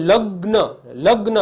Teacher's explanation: લ અને ગ ભેગા બોલાય છે અને ન અલગ બોલાય છે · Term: થડકો